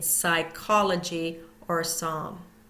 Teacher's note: we do not hear the p in Psychology or Psalm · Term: silent P